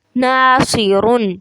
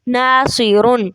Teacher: جب ہم نے صاد کو موٹا کرنا ہے تو اس کے ساتھ ہم نے پھر جو پیچھے نون ہے اس کو موٹا نہیں کر دینا